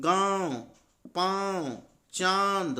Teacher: इसमें आप देखेंगे कि हवा नाक और मुंह दोनों से बाहर निकलती है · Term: अनुनासिका